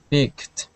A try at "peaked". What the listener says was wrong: Okay, one more time, give me a good E sound. P, peaked.